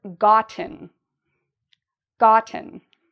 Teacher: Well, if you said this part is louder and longer, you are correct. There's two parts to the pronunciation of this word, and the first part is louder; the second part is quieter. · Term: stress